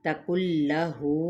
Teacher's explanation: ادغام بلا غنہ کیونکہ نون ساکن کے بعد لام آ رہا ہے، لام یا را آ جائیں تو پھر ہم نے غنہ نہیں کرنا ہوتا ان 2 حروف پر۔